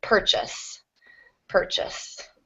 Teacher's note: so stress on the first syllable but the r controls the vowel so not not a strong vowel there purchase thank you yeah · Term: R controlled vowel